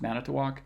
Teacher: it has 4 syllables and has stress on the first and the last